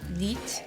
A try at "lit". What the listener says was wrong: No, it's like lit. Because there's 2 T's, so this vowel is really short.